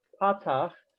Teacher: The other one, the horizontal line underneath is called a patach, accented on the pa, patach, and that is also ah.